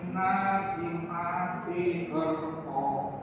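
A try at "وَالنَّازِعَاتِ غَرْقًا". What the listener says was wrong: Kurang dengung bawannya. Wan nyamankan dulu.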